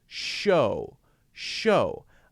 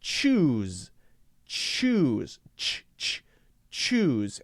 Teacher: when we say shh, nothing's changing. Everything's staying the same. Whereas ch, ch is changing. It's sort of like it decays very quickly.